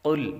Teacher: قاف حروف مصالحہ میں سے ہے، اس لیے اس کو پر پڑھیں گے، اور لام باریک ہے